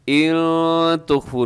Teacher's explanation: نون ساکن کی بعد تا ہے تو یہاں اخفا ہوگا